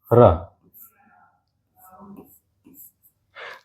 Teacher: आप प्रैक्टिकली करके देखना एक बार, र का जैसे ही उच्चारण करोगे तो जीभ के अंदर एक कंपन उत्पन्न होगी